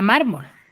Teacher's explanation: tiene la sílaba tónica en la penúltima sílaba